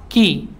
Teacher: Kalau kaf itu bagian tengah, bagian pangkal lidah di depannya yang menempel pada langit-langit yang lunak dan yang keras bersamaan. Ki, ya, ada udara yang mengalir.